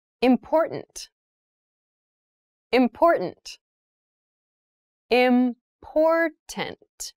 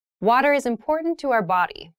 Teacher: the pronunciation of this word that first t is actually reduced it sounds more like a d in fast speech